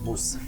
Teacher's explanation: It's almost like he cuts off the second vowel that would be in Musef